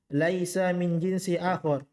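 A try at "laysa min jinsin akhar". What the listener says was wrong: Tanwin. Enggak, jinsin gitu.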